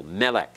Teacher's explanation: are many uses of Melech in Hebrew and Melech means king notice the accents on the first syllable notice the accent over that first syllable